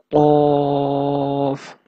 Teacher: Off comes out when the raised back portion of the tongue touches the soft part of palate.